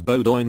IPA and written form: ˈboʊdɪn (Bowdoin)